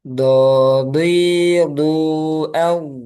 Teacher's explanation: Ini tepi lidah bertemu dengan gigi geraham atas.